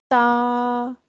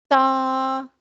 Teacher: تا کا مخرج یہ ہے کہ زبان کی نوک اوپر کے دانتوں کی جڑ سے لگے. زبان کی نوک اوپر کے دانتوں کی جڑ سے لگے گی تو ایک حرف ادا ہوگا تا.